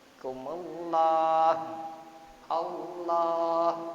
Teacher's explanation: Lam jalalah jatuh setelah huruf yang di garis depan atau di garis doma atau rofa atau depan, maka lam jalalah dibaca tafkhim, artinya tebal